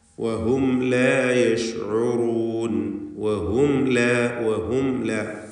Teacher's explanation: വഹും ലാ എന്നിങ്ങനെ മീമിനെ മണിക്കാതെ ഉച്ചരിക്കുക. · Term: ഇൽഹാർ ഷഫവി